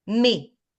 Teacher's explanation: So the S we don't pronounce.